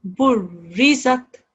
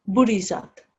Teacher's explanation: The correct way of reading this would be to stress on the ra and harden the sound of the ra. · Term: ra mushaddad